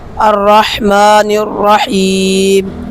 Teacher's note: یہاں پر لام تعریف کا ادغام ہو رہا ہے، اس لیے کہ لام تعریف کے بعد را ہے اور را حروف شمسیہ میں سے ہے، اور قاعدہ یہ ہے کہ لام تعریف کے بعد حروف شمسیہ میں سے کوئی حرف آ جائے تو لام تعریف کا ادغام ہوگا۔